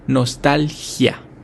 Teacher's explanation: nostalgia tiene un acento prosódico en la segunda sílaba